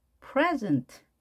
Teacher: 앞에 강세가 주어졌죠. 이럴 경우에는 명사적 의미가 되겠죠.